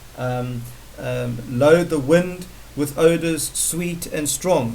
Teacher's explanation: the sibilant or the sibilance, the repetition of the S in song, sweet and strong